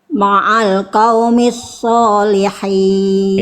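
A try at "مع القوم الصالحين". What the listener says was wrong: Ini huruf apa Bunda? Nah, bunyi soalnya tadi saya dengar selewat kayak huruf fa. Qaumis. Tot itu desisnya jelas. Jangan jadi kayak huruf fa. Qaumis salihin. Ma'al qaumis salihin. Oke, yang awal tadi sempat saya dengar kayak sa.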